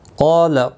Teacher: قال قاف اور الف دونوں پر پڑھے جائیں گے. قاف حروف مستعلیہ ہے اس لیے پر پڑھا جائے گا، اور مستعلیہ کے ساتھ میں جب الف بھی آتا ہے وہ بھی ایک ہی کلمے کے اندر تو وہ بھی پر پڑھا جاتا ہے.